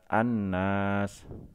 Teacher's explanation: cara membacanya dibaca idgham yaitu melebur lamnya tidak dibaca tapi langsung dibaca huruf sesudah alif lam nya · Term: Idgham Syamsiah